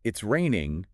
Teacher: your voice goes up at the end it sounds like a question